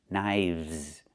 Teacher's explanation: Again, with the V sound plus the Z sound like in zebra.